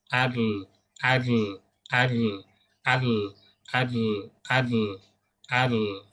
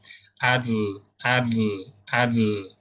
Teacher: suara huruf lam bergeser dari tengah kemudian ke kanan dan ke kiri lidah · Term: inhiraf